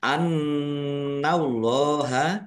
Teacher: nun tasdid dibaca ghunah atau mendengung. Ditahan ya harus ditahan · nun tasdid dibaca gunnah atau mendengung, ditahan ya, harus ditahan biar tampak mendengung. Annallaha Allahnya dibaca tebal karena harokat di depannya fathah.